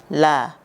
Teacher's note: ujung dua tepi lidah sampai pada akhir ujung lidah menempel pada gusi dari gigi-gigi bagian atas yang berhadapan pada dua gigi geraham pertama, dua gigi taring, dua gigi seri samping, dan dua gigi seri, yaitu huruf lam, la.